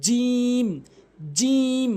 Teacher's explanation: জিহ্বার মাঝখানের অংশটা উপরে তালুর সঙ্গে লাগাবেন